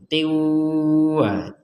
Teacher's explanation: dari yang hayatin ini dimasukkan ke huruf wawu ya harokatnya, kemudian menjadi ditambahi dengung